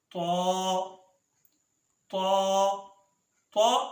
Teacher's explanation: طا ادا ہوتا ہے زبان کی نوک اور ثنایا علیہ کی جڑ